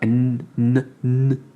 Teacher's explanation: comme un e le N comme un N sans faire ne c'est vraiment un N qui s'arrête à la moitié